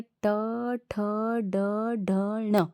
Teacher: मूर्धन्य का मतलब होता है मुड़ना, मूर्धन्य मुड़ना। आपकी जो जीवा है इनको बोलते समय थोड़ा ऊपर की तरफ मुड़ती हैं। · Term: मूर्धन्य वर्ण